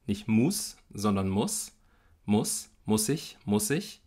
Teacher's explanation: Im Wort muss haben wir einen ungespannten Vokal, O, also nicht U, sondern O, nicht muss, sondern muss, muss ich.